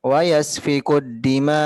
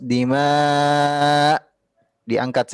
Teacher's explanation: usahakan intonasinya diangkat sedikit karena hamzahnya perlu kita perjelas.